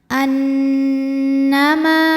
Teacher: Cara membacanya adalah berdengung, bunyi dengungannya tahan kurang lebih 2 harokat. Annama, ma hukumnya adalah mad tabi'i dhahiri, sebab ada alif yang sebelumnya berharokat fathah, maka mimnya panjang 2 harokat.